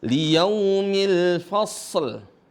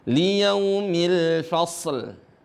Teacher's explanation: Nah, di sini ada alif. Walaupun ada alif setelahnya itu enggak dibaca panjang. Kenapa? Karena bukan huruf mad.